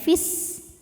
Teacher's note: Jika wasal atau kita meneruskan bacaan, fi-nya ini pendek, fis, madnya gugur. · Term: takhallus bil hadfi